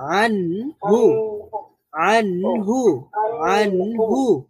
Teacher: ন সাউন্ডটা পুরোপুরি বন্ধ হয়ে যাচ্ছে না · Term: বাইয়িনা